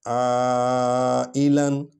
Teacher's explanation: وَوَجَدَكَ عَائِلًا، عَائِلًا، عین حرف ہلکی ہے، یہ اقصی حلق سے نکالا جاتا ہے